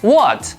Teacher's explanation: The fourth tone is a falling tone. It's from a high pitch to a low pitch.